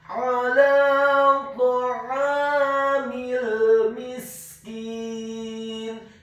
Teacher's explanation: huruf ta-nya dibaca tafkhim tebal, fathah 1 harokat dengan posisi bibir bawah kita agak tertutup dan posisi lidah kita di langit-langit atas. Kemudian huruf ainnya ditekankan, fathah 2 harokat karena setelahnya ada alif.